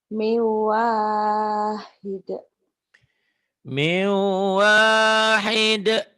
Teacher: Ini dibacanya nun mati atau tanwinnya bunyinya jadi melebur kepada huruf di depannya. Min ujungnya kan n. Jadi ketemu waw jadi mew, n-nya jadi w. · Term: idgham bigunnah